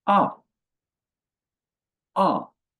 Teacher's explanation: The fourth tone sharp and falling.